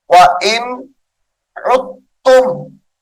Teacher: عین جو ہے تا مشدد کے ساتھ ملا کر پڑھیں گے، دال ساکن کو چھوڑ دیا جائے گا